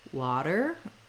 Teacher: we have that flap it sounds a little more like a d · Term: flap t